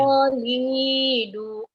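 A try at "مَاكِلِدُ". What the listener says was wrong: makolido donya pendek ya Bu makolido makolido kemudian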